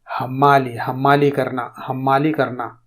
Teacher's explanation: اردو میں ہا کے ساتھ حمالی بہت کم بولتے ہیں، بلکہ اس کے بجائے دو چشمی ہا کے ساتھ حمالی